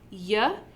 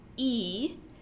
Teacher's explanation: in the exact same place when you make those two sounds ye is a palatal glide it's a consonant and e is what we call a front vowel